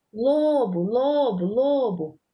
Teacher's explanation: Quando a gente pronuncia a palavra lobo, o lo saiu com mais intensidade, né? A sílaba se prolongou mais na hora da fala, da pronúncia dela, ok? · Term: sílaba tônica